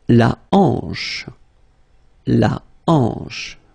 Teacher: Remember, H here is not pronounced, so you get the sound en, hanche at the beginning.